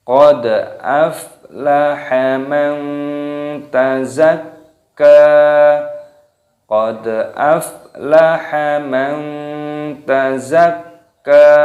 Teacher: Di sini terdapat dal yang berharokat sukun, ini diqalqalah. Qad aflaha, fa-nya berharokat sukun, ini dimatikan fa-nya, dibaca aflaha.